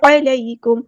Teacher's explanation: میم ساکن پہ اظہار شفوی ہو رہا، ٹائم نہیں دینا